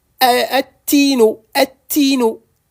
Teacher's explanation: On ne prononcera plus le lam de l'article. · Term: lettre solaire